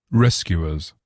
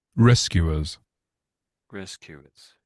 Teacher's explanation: I think the emphasis at the beginning of the word.